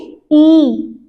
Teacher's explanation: तो जीभ का जो हमारा आगे का हिस्सा है उनसे इनका उच्चारण होता है। तो जीभ के आधार पर अग्र स्वर से हमारे ये वर्ण आगे से निकलते हैं, ये स्वर आगे निकलते हैं।